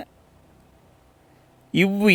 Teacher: மேல்வாய் பல்லை கீழ் உதடு பொருந்தும். அப்பதான் இந்த இவ் என்ற எழுத்து உருவாகும்.